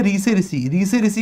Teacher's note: ऋ से ऋषि का उच्चारण कहां से होता है? मूर्धा से होता है। मूर्धा से। किस-किस को पता है कि मूर्धा किसे कहते हैं?